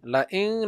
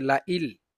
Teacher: ইদগামে বেলাগুন্না মানে গুন্না ছাড়া পরিষ্কার করে পড়বো।